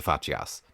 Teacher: in medieval Latin, it's become a bit closer to C's in modern Italian, where if certain vowels follow it, then it becomes a ch sound